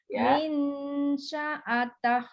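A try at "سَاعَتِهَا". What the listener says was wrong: Sa'atih itu ain, sementara sa'atah itu hamzah. Nah, bedakan. Min sa'atah.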